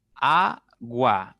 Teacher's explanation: la mayor fuerza está en la segunda sílaba contando derecha izquierda